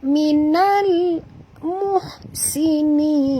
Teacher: Bunyikan lam yang mati dengan jelas tanpa lantunan. Jangan baca minal. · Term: alif lam muqammar